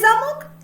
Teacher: у слові замок голосніше промовляється звук О він знаходиться у другому складі